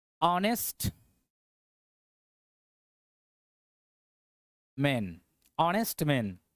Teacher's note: एच तो है लेकिन एच से इसका उच्चारण ह नहीं हो रहा है। अ आ रहा है।